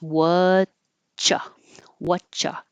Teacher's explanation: The tongue goes up to the T position and then holds it and then releases for the ch. But you're going to stop the airflow for ch anyway.